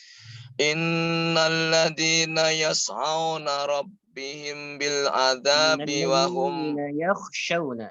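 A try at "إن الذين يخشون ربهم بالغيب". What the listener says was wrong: yakhshawna bukan yas'aun tapi yakhshawna khasyiyah.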